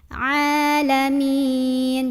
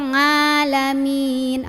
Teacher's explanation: harusnya Aa masuk tenggorokan tengah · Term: Ain